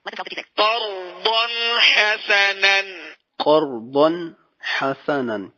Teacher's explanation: ضاد کے بعد حا، حروف ہلکی ہے لہذا اظہار ہوگا